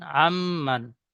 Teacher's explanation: তাই নুন সাকিন আওয়াজকে এক আলিফ পরিমাণ গুন্না করে পড়তে হয় · আইনের উপর জাবার এসেছে, জাবারটি হারাকাত, হারাকাত তাড়াতাড়ি পড়তে হয়, টান দেওয়া নিষেধ। নুন সাকিনের পরে ইউ মিনের 4টি অক্ষরের মধ্যে মিম এসেছে, তাই নুন সাকিনের আওয়াজকে একালি পরিমাণ গুন্না করে পড়তে হয়, একে ইদগামে নাকিস বলে। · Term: ইমে নাকিস